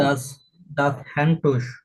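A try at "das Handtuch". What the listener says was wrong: হ্যান্ডটুস না, হানটুক। এই যে হান, হান, এই যে টুক, টুক খ, এটা খ, উ এর পরে সে হা, খ, হানটুক। হানটুক। দাস হানটুক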